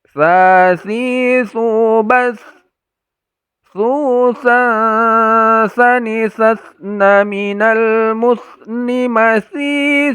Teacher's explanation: Jadi ujung lidah kita tempelkan ke ujung gigi seri bagian atas.